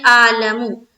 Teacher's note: بعض ہماری بہنوں کا یہاں پر عین اعلم جہاں پر بھی ہوتا ہے تو وہاں پر عین حذف ہو جاتا ہے، وہ پڑھتی ہیں اعلم، بعض بہنوں کا بھی بعض بھائیوں کا بھی، تو اس کو درست کریں، اعلم اعلم اعلم اعلم، اس کو خوب مشق کریں تو پھر وہ پرفیکٹ طور پر نکلنے لگے گا۔